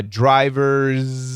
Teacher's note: going from Z vibrated to S aspirated